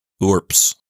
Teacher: But in Latin, I think the way you're supposed to say it is with the B and the S both voiceless, resulting in something like urps.